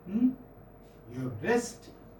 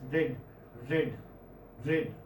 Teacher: It is a voiced alveolar frictionless continuant, or say flap.